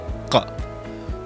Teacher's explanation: So for example, one says ka, the root of the tongue is lifting and making a contact with the soft palate